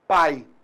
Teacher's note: Então eu tenho a vogal A e a semivogal I.